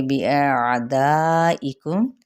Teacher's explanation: دا پہ ہم 4 حرکت لمبا کریں گے یعنی 2 الف کے برابر، اور میم پہ اظہار شفوی، اور ساتھ ہی یہ وقف ہوگا وقف بالسکون، کیونکہ یہ عارضی سکون نہیں ہے بلکہ اپنا اصلی سکون ہے۔